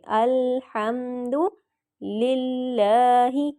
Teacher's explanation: کیونکہ اللہ، میں نے آپ کو بتایا ہے کہ لفظ اللہ کے پچھلے حرف کے نیچے زیر ہوگی تو اللہ کو موٹا نہیں پڑھیں گے، باریک پڑھیں گے